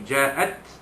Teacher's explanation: Ja itu jim alif di atas ja, jumpa dengan hamzah dalam kalimah yang sama, itu ja'at. Maka jim alif di atas ja ini dia baca panjangnya 6 harakat, kerana mad yang dia ada di situ ialah mad wajib muttasil.